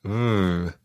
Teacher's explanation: Depending on which part of the Spanish-speaking world you're familiar with, the letter V is pronounced slightly differently. In Spain, it's pronounced a sort of combination between a B and a V, and it sounds something like vrr